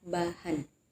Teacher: B merupakan bunyi bilabial yaitu bunyi yang dihasilkan ketika bibir atas bertemu dengan bibir bagian bawah